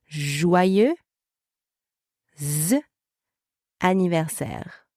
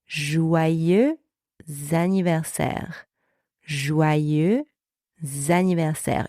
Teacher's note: And the next word, anniversaire, starts with the vowel A. Therefore, we have a liaison with a Z sound, and we are going to add this extra sound in between the two words to link them together only when we speak, right? Not in writing.